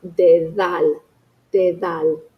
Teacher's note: But in the middle of a word surrounded by vowels, it has a soft th sound like the word the or those.